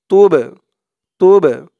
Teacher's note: এই বা টা কলকলার হরফ ধাক্কা দিয়ে পড়তে হবে